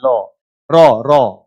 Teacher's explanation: लुंठित व्यंजन किसको कहते हैं? रॉ को कहते हैं, क्योंकि जीभ के साथ टकरा के आता है